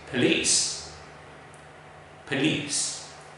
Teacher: the correct pronunciation of this word is police because the first syllable has a schwa